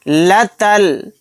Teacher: تا کو لام میں ملا دیں گے، الف نہیں پڑھا جائے گا